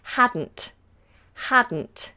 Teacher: the D and the N become the same sound hadn't hadn't hadn't so the tongue just goes up the once